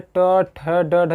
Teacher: हमारी जिह्वा पीछे मुड़ रही है और मूर्धा भाग में टच हो रही है, इसलिए उसको क्या कर रहे थे, मूर्धन्य वर्ग।